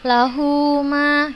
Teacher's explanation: Lahu ma, kita panjangkan 2 harokat di ha dhamirnya tadi. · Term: mad silah